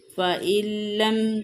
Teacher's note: نون ساکن کے بعد لام حرف یرملون میں سے ہے، تو یہاں پہ ادغام ہوگا یعنی بغیر غنہ کے